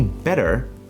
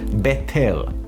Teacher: we don't pronounce the t's in the middle as t like we don't say betel we say better like a d